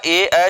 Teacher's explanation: ये ए ऐ वर्ण का उच्चारण प्लेस होता है, कंठ तालव्य।